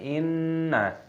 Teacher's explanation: nun tasdid kita dengungkan, didengungkan inna, tapi pendek nunnya, jangan dibaca panjang